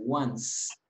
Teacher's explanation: Entonces pronuncian como una S, once.